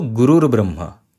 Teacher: That is why this Rutu Sandhi is happening. So Visarg is removing and with this Ba you are getting a Ra.